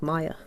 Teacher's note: instead of ma with a glottal stop, it's more like maya for the water, but not a huge difference there.